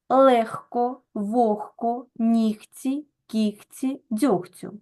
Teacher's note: у цих п'ятьох словах і похідних від них відбувається заміна дзвінкового г на глухий х